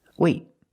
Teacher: It's a stop T. I stop the air. I stop the air with my tongue in the T position.